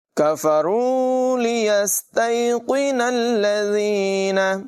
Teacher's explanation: کاف کی آواز باریک ہے، یہاں قوف کو پر آواز میں پڑھیں گے، سین میں سیٹی کی آواز نکالیں گے